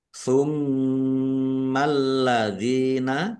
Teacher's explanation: Tummalladzina mim tasdid dibaca ghunah atau mendengung.